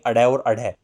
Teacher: ये इसलिए पड़ा क्योंकि इन व्यंजनों का उच्चारण करते समय जब आप बोलेंगे अड़े और अढ़, जीभ इतना झटका खाती है कि ऐसा लगता है कि ये मुख से बाहर फेंके जा रहे हों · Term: उत्क्षिप्त